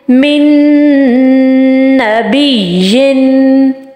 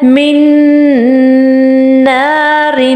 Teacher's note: پھر second example ہے من نار، نون کو ہم نے نیکسٹ والے نون کے ساتھ بالکل داخل کر دیا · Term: ادغام